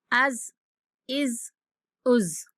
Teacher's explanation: زا حروف صفیریہ میں سے ہے، تو اس کو سیٹی جیسی آواز کے ساتھ سختی سے پڑھتے ہیں۔